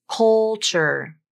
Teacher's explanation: When linking a dark L to a consonant, like in the word culture, you typically don't bring the tongue tip up. The tongue tip stays down for that dark L.